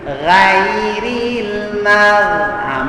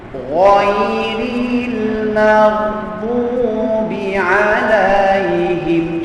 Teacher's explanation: ghain itu mesti ditebalkan kedua-dua tempat ya Jadi kita bulatkan mulut kita hujung mulut kita bibir mulut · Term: Huruf tebal